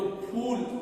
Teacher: इसको जब हम बोलते हैं फूल, इसको जब हम ये फे बोलता है तो फूल, तो हमारे जो होठ की आकृति है वो बिल्कुल ओ आकार की बन जाती है